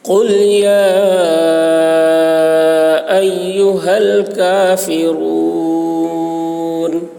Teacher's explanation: قل میں بڑی قاف ہے، اس کو موٹی آواز سے بولنا ہے.